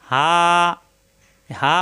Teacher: মুখ খোলা থাকবে আর এই হা কন্ঠ চাপ দিয়ে হা এই হাকে লম্বা করতে হবে এই আলিফ আলাদা আর পড়তে